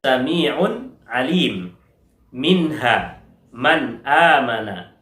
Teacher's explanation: Ya, izhar halqi yaitu ketika kita membaca nun sukun dan tanwin yang bertemu dengan huruf izhar, maka bunyi dari nun sukun dan tanwinnya terdengar jelas